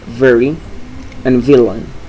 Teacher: the sound v is labiodental, like in the words very and villain.